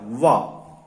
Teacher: फिर दंतोष्ठ यानी दांत और ओठ में का प्रयोग होते हुए जिस वर्ण को बोला जाता है वह एक वर्ण है वा। वा का जब हम उच्चारण करते हैं तो ऊपर के दांत और ओठ का प्रयोग इसमें होता है,